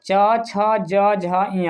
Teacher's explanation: च, छ, ज, झ, ञ उच्चारण स्थान पूछ दिया जाए तो क्या हो जाएगा? तालु हो जाएगा।